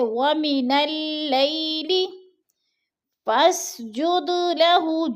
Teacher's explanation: جد دال ساکن ہے اور حروف قلقلہ میں سے ہے، تو ادھر ہم نے قلقلہ کرنا ہے